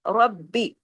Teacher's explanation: با پہ تشدید ہے، دو با ہے، اس وجہ سے را ہیوی، با باریک